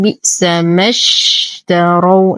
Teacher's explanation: ننتقل من فتحة الميم إلى إسكان الشين